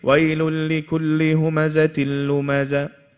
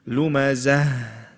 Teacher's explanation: There's a shadda there. But the most important thing in these verses, in all of these verses, is the ha at the end. Many people leave this ha out totally.